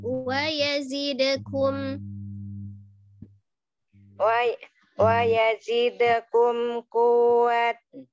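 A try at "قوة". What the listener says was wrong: Kan wau tasdidnya tapi tidak ditahan. Kuwatan.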